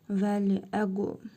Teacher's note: Qaf harfinin üzərində cəzm var. Vurğulu tələffüz edirik. Qalqala harfidir.